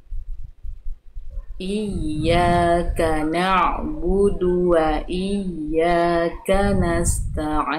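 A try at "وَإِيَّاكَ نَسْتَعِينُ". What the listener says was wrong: Oke, tinggal di sin sukun sudah bagus. Tinggal sin sukun sama. Jadi jangan buru-buru melafalkan t-nya. Jadinya sin sukunnya terputus.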